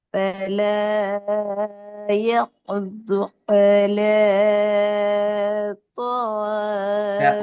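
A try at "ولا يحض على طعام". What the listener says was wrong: அல நீட்டுறது பிழையே. உங்களுக்கு நீட்ட வேண்டியது ஒரு செகண்ட் தான். ஆல அவ்வளவுதான்.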